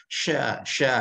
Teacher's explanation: Nah, kalau tadi sofir huruf za-nya, sya ini lebih keras lagi ya hembusannya, namanya tafashi ya